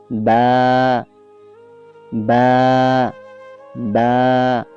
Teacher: দুই টুট হইতে বা উচ্চারিত হয়।